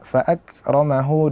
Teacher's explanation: Kaf disukunkan kita datangkan dulu sifat syiddah nya kita tahan dulu suaranya kemudian kita lepaskan